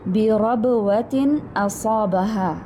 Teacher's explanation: تنوین کے بعد حمزہ آ رہا ہے حروف حلقی میں سے. تنوین کے بعد حمزہ یہاں اظہار حلقی ہوگا